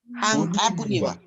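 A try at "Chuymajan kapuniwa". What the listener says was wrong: No, te falta una N.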